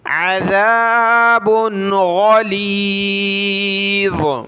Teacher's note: با پر ناک میں آواز پیدا نہیں کریں گے کیونکہ آگے جو حرف ہے حروف حلقی کا حرف ہے غین